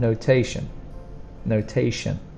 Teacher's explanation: We have shun. The spelling is T-I-O-N, but the pronunciation is a sh sound